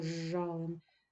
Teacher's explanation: звук з зникає він асимілюється до ж